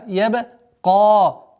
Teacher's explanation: Твердое произношение каф с долготой в размере двух огласовок фатха.